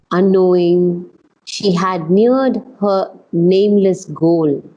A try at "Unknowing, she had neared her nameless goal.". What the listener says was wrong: here, you want to be a little bit stronger on the word unknowing. Knowing she had neared her nameless goal. Because she's not aware yet.